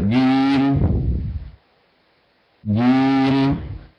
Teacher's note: كان بتسال الجيم تنطق جا ولا جم جم انطقها هكذا جم جيم محبوسه مجهور شديده وليست جيم جي هكذا ليست هكذا تنطق شديده مجوره جيم اتفضل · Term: محبوسه مجهوره شديده